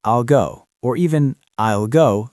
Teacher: In natural speech, will is usually weak. Reduced.